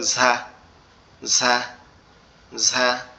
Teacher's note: আওয়াজটা হবে হালকা একটু ফ্যাস ফ্যাস মতো